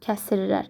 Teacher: S ilə R-nın arasına i daxil olacaq.